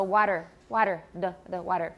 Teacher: so if you say take that's a t that's aspirated but if it's got vowels around it then it sounds like a very short d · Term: tap